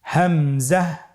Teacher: হামজা হরফটি উচ্চারণ ক্ষেত্রে বারিক করে উচ্চারণ করতে হবে এবং এখানে টেনে পড়া যাবে না। দ্রুত পড়তে হবে।